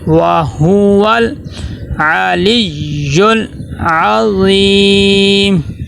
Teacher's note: لام کے اوپر جزم ہے، لام ساکن ہے، تو لام دیکھیں یہاں پہ لام کے اوپر قلقلہ نہ ہو جائے